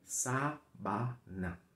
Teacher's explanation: Bom, eu quero falar da pronúncia, porque a palavra sábana, primeiro que a sílaba tônica é a primeira, né? Sábana, tá?